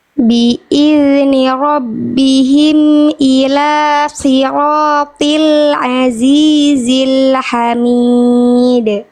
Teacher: Sod dan to-nya maksimalkan kadar tebalnya